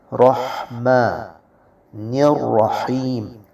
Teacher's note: حروف حلقی میں سے ہا ہے اور یہ وسط حلق سے نکلے گا